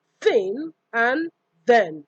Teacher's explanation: we have the interdental fricatives